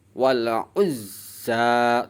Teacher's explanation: terus za-nya dibaca panjang sebab ada harokat fathah tegak berdiri. Ukuran panjangnya sama seperti mad tabi'i, 1 alif 2 harokat atau 2 ketuk.